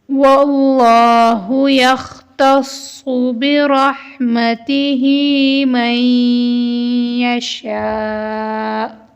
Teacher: شین کے بعد حمزہ آیا ہے، حمزہ کے اوپر مد ہے تو ہم شین کو 3 الف کے برابر کھینچ کر پڑھیں گے